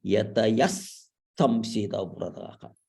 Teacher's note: Here it is Visarga followed by Sakara. So you use it yatayas samshitavratah.